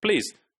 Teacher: And this shows that the l is voiceless. Because of the context of p, this l is made voiceless.